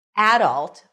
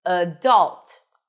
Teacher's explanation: The stress is on the first syllable. Adult. The second pronunciation is adult. Stress is on the second syllable.